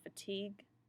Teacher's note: you don't hear the UE, you just hear that hard G